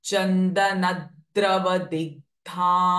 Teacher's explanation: द्र is a conjunction sound द एंड र coming together so it will have a pressing effect